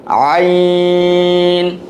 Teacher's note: গলার ভিতর থেকে একটু চেপে আসবে